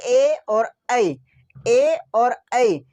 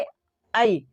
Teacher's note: ए और ई ये कंठ से भी निकलता है और तालू से भी निकलता है ए आई कंठ से और तालू से दोनों से निकलता है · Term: कंठ तालू